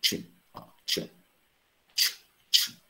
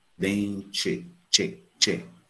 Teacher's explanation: Mas por que que ela tem pronúncia tch, tch? Porque ela está diante do i. E do i final, desse i átomo, desse i reduzido, desse i vogal temática. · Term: consoante africada